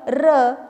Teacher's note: रचा उच्चार बघा थोडा आपल्याला कंपित वाटतो म्हणून र ला कंपित वर्ण, कंपित स्वर असं देखील म्हटलं जातं.